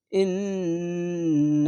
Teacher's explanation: এটি হচ্ছে ওয়াজিব গুন্না গুনগুন করে পড়তে হবে